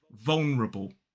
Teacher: some people may drop the schah in the second syllable · Now, another way you may hear this pronounced in the UK is with 3 syllables, as some people may drop the schwa in the second syllable